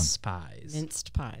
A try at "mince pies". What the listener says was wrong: Not minced. Mince.